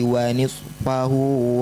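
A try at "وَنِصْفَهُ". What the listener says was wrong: Keluarkan lagi shadnya. Nils, alirkan lagi udaranya.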